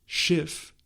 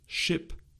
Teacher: The last sound in the German word Schiff is a fricative, while the sound in its English equivalent, ship, is a plosive.